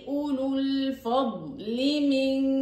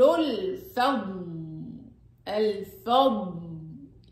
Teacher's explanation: بسبب التقاء الساكنين اللي هو حرف المد واللام الساكنه سقط حرف المد في الوصل